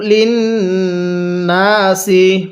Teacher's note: এই নুনের মধ্যে গুন্নাহ করবেন, মিমে নুনের তাসদিদ গুন্নাহ করা ওয়াজিব